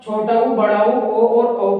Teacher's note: छोटा ऊ, बड़ा ऊ, ओ और औ का उच्चारण करने पर जो हमारे ओष्ठ हैं इनकी आकृति वृत्ताकार होगी और गोलाकार।